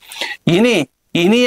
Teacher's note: ఇని ఇని అనేటువంటిది తాళవ్యానునాసికం తాలవ్యానునాసికం